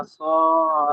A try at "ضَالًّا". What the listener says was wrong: ওয়াওয়াজাদাকা দ, এটা জোয়াত আছে, ওয়াওয়াজাদাকা ضالا ফাহাদা।